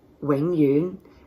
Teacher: Forever in Cantonese is your low-rising wing, low-rising yun